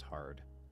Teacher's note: Rhoticism. The general American accent is rhotic, and speakers pronounce the R in words such as hard.